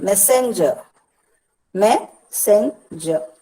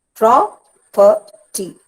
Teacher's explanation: the first syllable is stressed and the next two are not.